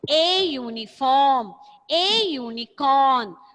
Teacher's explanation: sometimes the word may begin with a vowel, U, but it has a consonant sound of YU